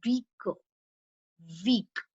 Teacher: Weak is the one where we are putting stress.